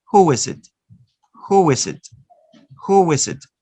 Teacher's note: Notice that you are inserting the consonant wa to join the vowel u and the vowel e, no? Who finishes in the vowel u and is starts with a vowel e.